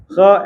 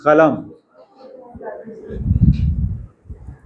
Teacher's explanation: root of the tongue जो है touch हो रही है हमारी घंटी से युवुला से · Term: युवुलर